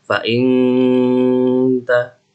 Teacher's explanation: Cara membacanya dengan menyamarkan bunyi nun sukun dan sambil mendengung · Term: if'ah hakiki